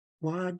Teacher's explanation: this W is not pronounced uh we just round our lips